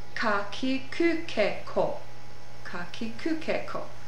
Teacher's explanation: A very short, clipped U sound.